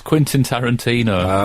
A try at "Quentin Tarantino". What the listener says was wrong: Quentin, not Quintin. Quentin. It's Quentin. That's a different name, Quentin. No, it's not. There's an E and not an I.